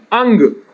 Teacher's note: इसमें आप नाक से आवाज निकालते, अनुनासिक अंग, नाक का प्रयोग करते हैं।